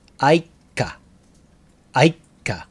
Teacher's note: Just make the k sound long, like a small tsu.